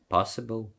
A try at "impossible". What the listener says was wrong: Но только не possible, тут что-то немного impossible, yeah.